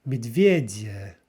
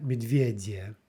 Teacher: So the first yeah is reduced a little bit, final two are not. Медведя. Number 4, swan, is лебедь.